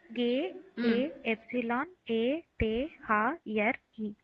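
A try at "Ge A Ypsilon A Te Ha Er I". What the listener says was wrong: ஆனா ஏ சொல்லக்கூடாது, ஆ சொல்லணும். கே ஆ உப்சிலான் ஆ டே ஹா எர் இ. இதுதான் சொல்லணும்.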